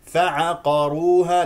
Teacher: قاف مستعل لا تستعلي الحروف التي مجاوره لها والراء مفخمه